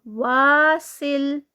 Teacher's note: یہاں پر سین کی clear whistling sound آتی ہے اس میں. واسل سل آگے جڑے گا یہ.